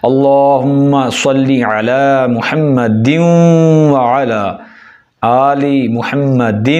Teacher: یا محمد آگے دال کے ساتھ واو کو ملا دینا ہے